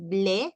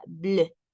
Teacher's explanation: estaría en alguna parte entre la U y la E, es decir, haciendo un puchero en forma de U, pero con el sonido de una E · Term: sonido EU